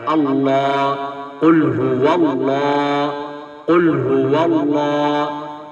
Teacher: لفظ اللہ کا لام جو ہے وہ موٹا ہو کر پڑھا جا رہا ہے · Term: لام موٹا